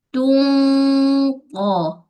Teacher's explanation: ikhfa dia dengung yang tebal sebab qaf mempunyai sifat isti'la. Jadi dengung pun dengung tebal. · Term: ikhfa haqiqi